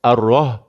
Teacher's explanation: Rah di sini ha pedas. Nipiskan sikit.